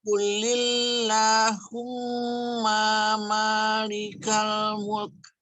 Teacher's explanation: Allahumma, ini mim yang di ma, humma, ma-nya pendek. Ma yang di malikal, ma-nya yang panjang.